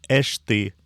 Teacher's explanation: В данном случае в этом и состоит прогрессивная ассимиляция. Следующий согласный уподобляется предыдущему по глухости.